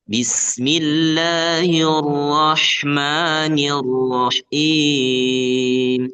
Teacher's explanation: getarannya itu hanya sekali dan itu dibikin samar ketika posisinya tasydid. Kata Imam Ibnu Jazari wa akhfi takriran idza tushaddadu.